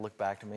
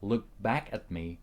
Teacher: When he says look back at me, it's like he's about to make the K sound but doesn't fully release it. It's almost like making a stop, which is common in casual speech. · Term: softened